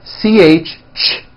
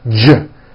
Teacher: if you take this CH sound and you keep everything in your mouth the same, you just add voicing, it becomes an American J sound. J, j. CH, ch, unvoiced, J voiced.